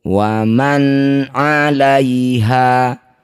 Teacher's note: Nun sukun bertemu ain disebut bacaan namanya idhar halqi. Cara bacanya bunyi nun sukun baca dengan jelas, tidak usah dengung.